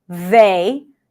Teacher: And we have the voice TH, which is everything is the same. Tongue goes out, tongue is soft to allow air to pass, and vocal cords are vibrating.